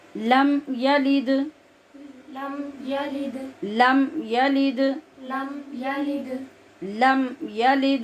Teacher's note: हम इसको बिल्कुल भी लंबा नहीं कर रहे और लम यालिद नहीं पढ़ रहे